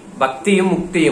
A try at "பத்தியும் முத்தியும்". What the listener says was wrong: பக்தியும் முக்தியும், பக்தி முக்தியும் இல்லைங்க ஐயா, பத்தியும் முத்தியும். அது இலக்கணம் பிழையது.